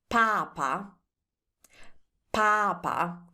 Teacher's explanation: can you hear I'm spending more time on the first A?